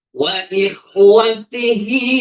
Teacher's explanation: Jadi bertemunya hak damir dengan hamzah atau alif. Jadi ikhwatihi tawil, panjang sampai 6 ketukan. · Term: mat sila tawila